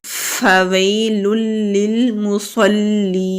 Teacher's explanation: یا سے پہلے زبر ہے تو یائے لین ہے، نرمی سے ادا کریں گے۔ لام کے اوپر تنوین ہے، آگے پھر لام ہے تو تنوین کے بعد لام آ رہا ہے، ادغام کریں گے۔ · فا کو ہونٹوں سے ادا کریں گے، واو کو یا سے ملائیں گے، یا سے پہلے زبر ہے تو یائے لین ہے، نرمی سے ادا کریں گے۔